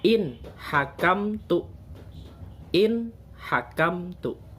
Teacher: Nunnya jelas karena nun mati bertemu huruf ha. Ha adalah salah satu huruf ijhar.